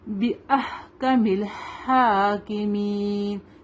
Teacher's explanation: ہا کھڑا زبر ہے دو کا لمبا کریں گے اس کو